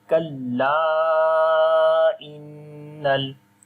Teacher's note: So this mad is madde munfasil right now. So we make also madde munfasil, which we long 3 to 4 seconds.